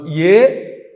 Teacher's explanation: కంఠము తాలువు రెండు కలిపి పనిచేస్తాయి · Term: కంఠతాలుహు